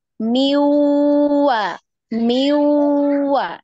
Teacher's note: Jadi langsung ya, langsung diidghamkan ke huruf waw ya. Jadi kita tidak baca minwa, bukan ya, tapi ya diidghamkan, dimasukkan ke huruf berikutnya.